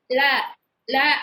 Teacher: நாவின் இரு பக்கங்கள் தடித்து மேல் அன்னத்தின் நடுப்பகுதியை தொடுவதால் லகரம் தோன்றும் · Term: வருடல் லகரம்